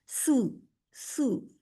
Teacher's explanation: सा पेश सू और सीन पेश सू। सीन की आवाज सीटी वाली आती है। सू, सू सीटी पाई जाती है इसमें।